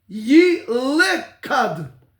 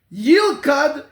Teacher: shevanach means it's silent, no vowel sound